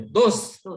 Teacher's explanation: आता हे दोस्त त जो आहे ना शेवटचा, त्याचा उच्चार पण पूर्ण करत नाहीत उर्दूमध्ये. दोस्त एवढंच. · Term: हलंतच